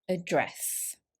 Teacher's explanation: the stress here is on the second syllable